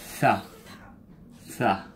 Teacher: I would say it's like your tongue between your teeth and you're pushing air.